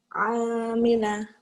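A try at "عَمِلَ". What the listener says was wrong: nggak ada yang panjang. Amila,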